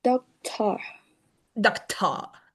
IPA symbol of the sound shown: ə